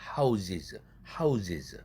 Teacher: house 할 때 스 단어, 즉 이 모음 앞에 있는 철자도 이 모음이라는 유성음의 영향을 받아서 z로 바뀐다는 거죠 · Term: 역행동화